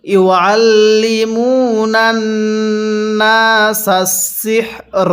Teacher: লামের মধ্যে টান হবে না, মিমের মধ্যে টান হবে · পেশের পরে ওয়াও সাকিন এক আলিফ টানতে হবে